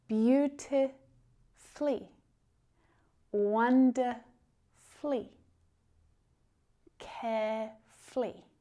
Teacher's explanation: When we're using words, adverbs that are exactly like this that end in -fully, we usually drop that U.